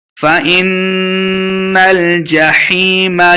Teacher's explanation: فَإِنَّ الْجَحِيمَ هِيَ الْمَأْوَى، فَإِن یہ حمزہ ہے، حمزہ کو نون کے سامنے لائیں گے، نون مشددہ گنہ کرنا ہے۔ فَإِنَّ الْجَحِيمَ، حیم یا مد ہے، 2 حرکات لمبا کرنا ہے۔